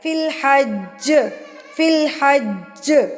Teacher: تو جب ہم یہاں پہ رکیں گے تو جیم کو ظاہر ہے ہم اس کو سکون میں لے آئیں گے تو جیم پر قلقلہ کیا جائے گا